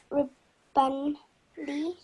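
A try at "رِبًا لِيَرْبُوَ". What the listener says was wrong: No, riballi, no noon sound.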